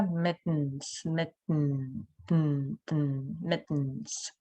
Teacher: В данном случае у нас T даже практически немая, даже не flap T, да? Mittens, mittens.